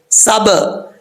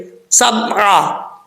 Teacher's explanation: با حروف قلقلہ میں سے قلقلہ ہوگا اس میں کیونکہ ساکن ہے. سب, یہ جو ب کی آواز آ رہی ہے یہ قلقلہ ہے, اس کو قلقلہ کہا جاتا ہے.